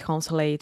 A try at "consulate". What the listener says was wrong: So almost all words that end in ate, like consulate, sorry, delicate, articulate, that will make the it sound, just like I like it, not consulate.